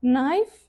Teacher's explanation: birinchi K harfi tushib qolib, faqat N talaffuz qilinadi va knife no shaklida ishlatiladi.